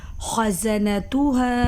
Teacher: خا مستعلیہ حروف میں سے ہے اور زا کو سختی سے پڑھیں گے